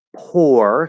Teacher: so that's an r-colored o